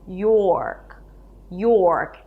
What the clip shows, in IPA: jɔ:rk